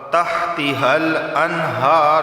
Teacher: نون ساکن کے بعد ہا آیا ہے تو یہاں پر صرف اظہار ہوگا، غنہ نہیں ہوگا